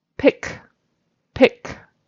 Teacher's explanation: It's a final K. It's unvoiced.